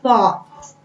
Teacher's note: Thought, OU, but it doesn't really sound U. It sounds aw